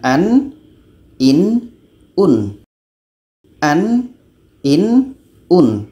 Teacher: Jadi nun ini kita sebut secara jelas, tidak ada anginnya.